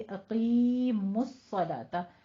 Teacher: कायम करो नमाज, कौफ को हम पुर पढ़ेंगे, अक़ीमुस्सलात। अक़ी में कौफ भी पुर है और इसको या मद्दा को खींचना भी है, 2 काउंट करने हैं। और मुस्सला स्वलात है, स्वलोत नहीं है, ठीक है।